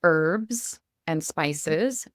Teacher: in American English we say herbs and spices and we do not say the H sound